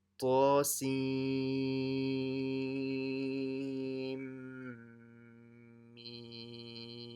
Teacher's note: you don't say the n after seen. So you should join the sin to the mim.